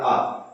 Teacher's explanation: विवर्त में तो एक ही आएगा आ। क्योंकि इसको बोलते समय मुंह पूरा खुलता है